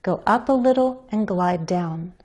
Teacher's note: my pitch changes on the word notes that's the final content word which makes it the focus word of the sentence